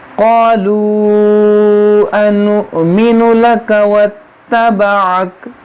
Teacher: واو کے اوپر حمزہ ہے اور حمزہ ساکنہ ہے، تو یہاں پر جھٹکا دے کر پڑھیں گے، اور یہاں پر یہ جو مد ہے یہ مد منفصل ہے، یہ واو مدہ ہے، واو مدہ کے بعد حمزہ دوسرے کلمے میں ہے۔